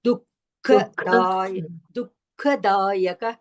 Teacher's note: क अभी भी अल्पप्राण आ रहा है ख महाप्राण